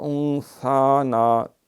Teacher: یہ نون ساکن ہے، اس کے بعد سا ہے، اخفا ہوگا ، وانثانا نہیں، سا پہ کھڑی زبر، انسا نا، اللہم من